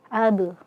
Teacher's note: ab ya kita ketemu dengan huruf qalqalah sini qalqalahnya qalqalah sughro ya karena letaknya di tengah ab. Nah, dan ee jangan sampai membaca huruf qalqalah ini itu seakan-akan menambah hamzah sukun di akhirnya.